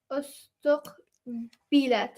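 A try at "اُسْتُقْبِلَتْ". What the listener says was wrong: Brilliant.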